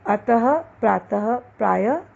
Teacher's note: विसर्ग का उच्चारण ह के समान होता है।